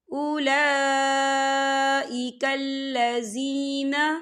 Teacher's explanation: لام کے پر کھڑی حرکات ہے اور اس پر مد بھی ہے، تو ہم اسے 4 حرکت کے برابر کھینچ کے پڑھیں گے۔